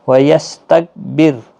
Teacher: را ساکن سے پہلے زیر ہے اس لیے را ساکن باریک پڑھا جائے گا